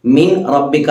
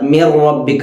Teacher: സാക്കിനായ നൂനിന് ശേഷം റാ വന്നു, ലാമ് റാ എന്നീ അക്ഷരം വന്നാണ് അവിടെ മണിക്കാതെയാണ് ഓതേണ്ടത്. എന്നാൽ അത് ഒന്നൊന്നിലേക്ക് ചേർക്കുകയും വേണം. മിൻ റബ്ബിക എന്ന് ഓതാതെ മിർ റബ്ബിക എന്ന് ഓതണം. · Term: ഇദ്ഗാം ബിലാഗുന്ന